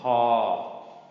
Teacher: This is pa, long midtone, pa. Typical p, pa.